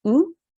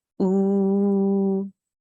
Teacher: So it's the same sound, but it's stretched longer. With a simple Dhamma, we say oo. With an inverted Dhamma, we say oo for 2 seconds.